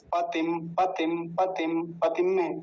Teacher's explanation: छोटी ई की मात्रा जल्दी बोलेंगे